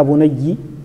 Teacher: ابو عمر البصري يكسر فليس من الذين يفتحون ولا من الذين يسكنون